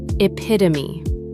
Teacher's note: 4 syllables. The final E is not silent, pronounced epitome.